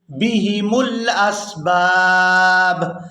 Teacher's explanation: یہاں بھی وقف کریں گے تو وقف کی صورت میں با جو ہے یہ ساکن ہو جائے گی. پہلی با کو دوسری با ساکن کے ساتھ ملا کر ادا کریں گے